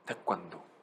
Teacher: 태권도 하면 혀 끝이 절반 정도는 입천장에 좀 닿아요. 그리고 절반 정도는 앞니에 닿아요. 태권도. 그래서 혀 끝이 약간 앞니에 살짝 닿아요.